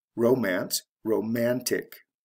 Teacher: And this is similar to the words above, where the CE is changed to T before adding the ending, romantic. So it goes from the first syllable to the second syllable in stress. CE to TIC. Romance, romantic.